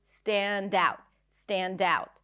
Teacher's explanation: Stand out is another phrasal verb. And in phrasal verbs, we stress the second part.